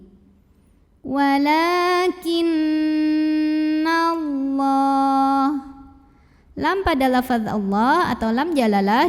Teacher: harokat saja berikutnya di sini ada hukum ghunnah karena Nun bertasydid maka cara bacanya bunyi n-nya tahan kurang lebih 2 harokat sampai bergetar halus ke hidung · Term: gunnah musyaddadah